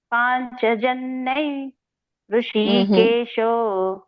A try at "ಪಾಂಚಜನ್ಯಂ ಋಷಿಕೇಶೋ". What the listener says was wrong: ಅಲ್ಲಿ ಅನುಸ್ವಾರ ಇದೆ ಸೊನ್ನೆ ಅಂದ್ರೆ ಅನುಸ್ವಾರ ಅದ ಒಂದು ಉಚ್ಚಾರಣೆ ಮ ಬರುತ್ತೆ